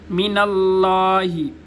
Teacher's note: لفظ اللہ کا لام موٹا ہوگا